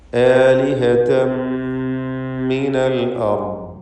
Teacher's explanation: ആലിഹതൻ എന്നതിലെ തൻവീനിനെ ശേഷമുള്ള മീമിൽ പൂർണ്ണമായും ലയിപ്പിച്ച് മണിച്ചുകൊണ്ട് ഇദ്ഗാം ബിഗുന്ന കാമിൽ നൽകി ഉച്ചരിക്കണം. · അൽ അർദ് റാഇനും ദ്വാദിനും തഫ്ഖീമാണ്. റാ സാക്കിനത്തായ റാ തൊട്ട് മുമ്പിൽ ഫത്ഹുമാണ്.